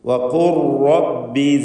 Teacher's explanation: വഖുൽ ഖാഫിന് തഫ്ഖീം. ലാമ് സാക്കിനത്തായ ലാമിനെ റായിലേക്ക് പൂർണ്ണമായും ലയിപ്പിക്കണം. ഇദ്ഗാം കാമിൽ. ലാമിൻ്റെ ശബ്ദം അല്പം പോലും ഉണ്ടാവില്ല. സാക്കിനത്തായ ലാമ് ലയിപ്പിക്കേണ്ട സന്ദർഭമാണിത്.